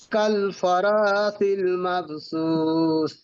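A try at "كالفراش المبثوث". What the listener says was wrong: শিন, শিন উচ্চারণ করেন ভালো করে। কাল ফারাশিল মাবসুস। শিন, শিনটা একটু খেয়াল করবেন। ফারাশিল, কাল ফারাশিল মাবসুস।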